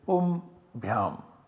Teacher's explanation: this anuswara is substituted by the parasavarna of this bha, and the nasal parasavarna of this bha is ma, so we get pum bhyam.